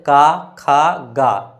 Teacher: क ख ग क्या चीज से बोल रहे हैं? कंठ से